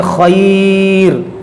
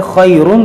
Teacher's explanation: यहाँ पर हम पढ़ेंगे खैर तो रा को बारीक पढ़ेंगे, और मिलाकर पढ़ेंगे खैरुन तो मोटा पढ़ेंगे